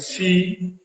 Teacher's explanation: सी में हमने देखा कि हमारी जीभ नीचे वाले दांत में टकरा गई